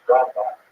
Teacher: Rambam is pronounced with the emphasis on the first syllable